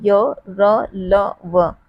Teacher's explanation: ये हमारे मुख के मध्य भाग से इनकी जो है ध्वनि निकलती है, य र ल व। और ये हमारे मुख के अंदर ही हम इनका जो उच्चारण करते हैं, इसीलिए इन्हें अंतस्थ व्यंजन कहा जाता है।